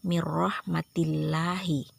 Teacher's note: lafal Allah itu disebut lam tarkik atau lam yang tipis ya lafal jalalahnya dibaca tipis karena dia didahului baris bawah atau baris i